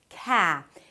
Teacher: When the k appears at the beginning of words, it's aspirated, so it feels like there is a little h right after.